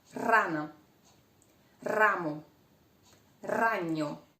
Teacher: R. The tip of your tongue must tremble behind your teeth.